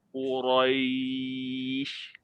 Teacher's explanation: Ra yang berbaris fathah adalah ra tebal